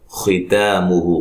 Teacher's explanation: خا کو موٹا ادا کریں گے، تا مد اصلی ہے، مہو ہو مد اصلی ہے۔